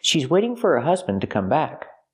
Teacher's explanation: to is not stressed pronounce it t